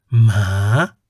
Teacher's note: the pitch of your voice ascends from the lowest point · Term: rising tone